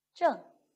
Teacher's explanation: 它既是翘舌音也是后鼻音